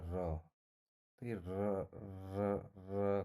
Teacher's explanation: आपकी जीभ कंपन कर रही है और इतनी अह माइनर कंपन होती है कि जो है कभी-कभी हमें पता भी नहीं लग पाता है पर इसे जो है हम प्रकल्पी व्यंजन कहते हैं।